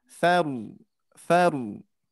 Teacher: pengucapan huruf ro tafkhim, hati-hati huruf yang sebelumnya jangan ikut tebal